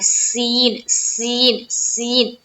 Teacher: जबकि सीन जो है ना, सीन दांतों को दाब के और सीन जब हम अदा करते हैं तो एक सीटी की सी आवाज आती है